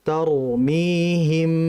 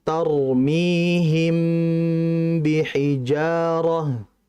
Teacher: Ikhfa syafawi ba. Mim ketemu ba, itu harus dijelaskan gunnahnya.